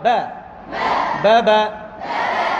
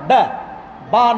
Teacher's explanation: আমাকে খেয়াল করতে হবে, বাকে পাতলা করে উচ্চারণ করতে হবে, বাকে জবর দিয়ে পাতলা করে উচ্চারণ করতে হবে